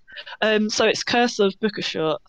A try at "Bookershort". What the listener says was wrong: Bookershort, you don't pronounce the T.